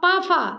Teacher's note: और प फ हमारा अघोष है